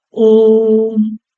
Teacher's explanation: ओम में तीन गुना समय लगता है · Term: प्लुत